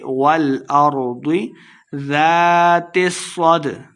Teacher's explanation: والارض لمبا نہیں کرنا، ضاد کو موٹا پڑھیں گے